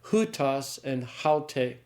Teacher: that initial tau has been replaced by a rough breathing